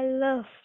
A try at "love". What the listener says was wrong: Love. A nha, không là O nha.